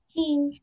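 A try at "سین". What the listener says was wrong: नो, शीन नहीं है बेटा, शीन में भी तीन नुक्ते होते हैं लेकिन शीन की शेप दूसरी होती है, मैं आपको दिखाती हूँ, शीन की शेप ऐसी होती है, इसमें भी तीन नुक्ते होते हैं लेकिन शीन की शेप इस तरीके से होती है, इसमें दो शोशे होते हैं, ऐसे छोटे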